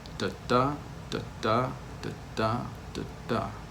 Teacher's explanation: Unstressed, stressed, unstressed, stressed, unstressed, stressed, unstressed, stressed. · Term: iambic meter